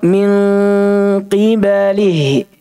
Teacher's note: Tapi untuk di kitab dasar ini kita hanya dijelaskan bahwa qaf kapan dia kasrah, datang setelah nun sukun atau tanwin, walaupun dia huruf tebal, tapi dengungnya dibaca tipis, ikhfa'nya dibaca tipis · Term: tafkhimun nisbi